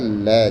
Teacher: उच्चारण में सांस जीव के दोनों पार्श्व भाग में निकल जाती है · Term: पार्श्विक व्यंजन